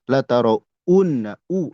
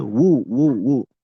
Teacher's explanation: Jadi jangan u kalau dilatin jangan u tapi wu ya. Kadang kalau baca cepat jadi u jadi hamzah padahal wau.